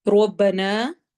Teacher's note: رو کو موٹا پڑھنا ہے، نا پہ مد کرنی ہے،